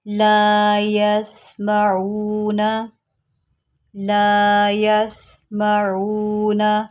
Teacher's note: یہاں سین کی سیٹی نکالیں اور عین نکالیں